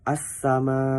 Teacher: Cara membacanya adalah menghilangkan lamnya. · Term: Alif lam syamsiah